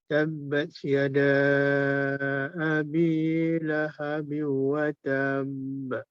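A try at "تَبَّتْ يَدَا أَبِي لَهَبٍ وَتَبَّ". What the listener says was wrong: Dia bukannya panjangkan ta tu. Dia lepas pada ta tu pendek, tapi untuk sebutkan ba tu kita lambat sikit.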